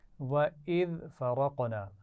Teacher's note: ذال کو نرمی سے پڑھا جائے گا اور باریک آواز ہے